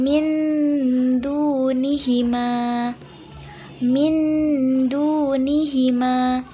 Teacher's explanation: Ma mindunihi Ma atau bisa juga dibaca ming-ming dunihi Ma yaitu bacaannya samar Dan disambut dengan dengung sepanjang 1-1 setengah Alif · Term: ikhfa Haqiqi, ikhfa hakiki